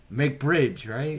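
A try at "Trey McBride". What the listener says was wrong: First of all, where's the G? Where's the G in bridge in his name?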